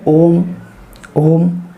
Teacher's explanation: यानी ओ को खींचकर बोलेंगे, तो ये कहलाता है आपका प्लुत स्वर।